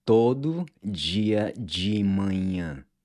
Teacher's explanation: Notice how the di and the de are pronounced like ji